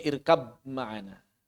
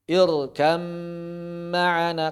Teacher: Idgham artinya menghilangkan suara huruf pertama mentasydid huruf kedua. Berarti suara banya hilang, suara mimnya bertasydid. · Ba-nya hilang, langsung mim bertasydid. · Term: idgham bighunah, idgham bigunah